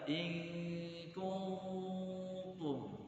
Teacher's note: kalau ada nun mati berjumpa dengan huruf ikhfa yang tipis, maka dia dinamakan dengan ikhfa tarqiq, ikhfa tipis